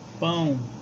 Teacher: a pronúncia se fala pão com O, mas a pronúncia parece pão com U, né? O O tende a U. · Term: semivogais